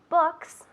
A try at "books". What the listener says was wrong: Good. Books. Un poco más largo. Books.